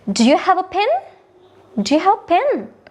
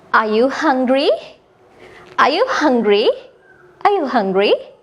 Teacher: ඒ කියන්නේ මේ වාක්‍ය අවසානයේදී අපේ voice එක rise වෙන්න ඕනේ. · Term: rising intonation